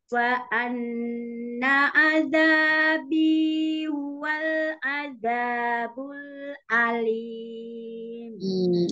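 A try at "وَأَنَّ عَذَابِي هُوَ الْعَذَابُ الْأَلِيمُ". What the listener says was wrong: Ainnya masih kurang konsisten ya. Yang di awal terdengar seperti hamzah. Bisa diulang.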